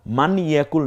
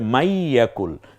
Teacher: তাসদিদ আসার সাথে সাথে জজমওয়ালা অক্ষরটি আর উচ্চারিত হয় না